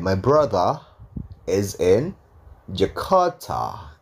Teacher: R-nya hilang, T-nya biasa. Karena R-nya nggak ketemu sama vokal kan.